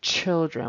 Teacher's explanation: He needs to push harder with his tongue for that CH. It sounds like an SH instead.